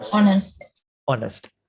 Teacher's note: අපි ඒක h අකුරකින් පටන් ගන්නවා වුණාට ඒක pronunciation එකේදී h අකුර silent. අපි කියවන්නේ ඒක honest කියලා නෙවෙයි honest කියලා.